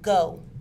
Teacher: G is a velar sound made using the tongue and the roof of the mouth. It is a stop sound and is voiced. The vocal cords vibrate.